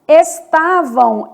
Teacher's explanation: esse M do final vai ter som de U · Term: semivogal